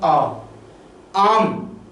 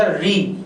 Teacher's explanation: तो इस आधार पर मुख्य द्वार खुलने के आधार पर स्वरों को बांट दिया गया कि कुछ ऐसे जिनमें ज्यादा खुलेगा, जैसे मैं कह दूं आ, आम, आ में मुंह पूरा खुला, और मैंने बोला री तो री में कम खुल रहा है